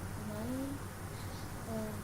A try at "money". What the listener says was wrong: I'm going to stop you right there, bud. You said Maine. That would be M-A-N-E. This Y says E, but for Maine, it would be an E making that say A. It's not man.